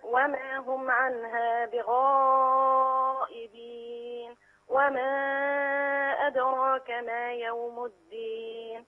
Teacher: المد المتصل الواجب مدي أربع حركات